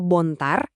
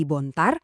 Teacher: Di beberapa bahasa kayak Batak Toba, penekanan kata aja bisa jadi pembeda makna. Kata bontar kalau tekanannya di awal artinya putih. Tapi coba geser tekanannya ke suku kata kedua jadi bontar artinya jadi darah. Bayangin cuma gara-gara penekanan artinya berubah total.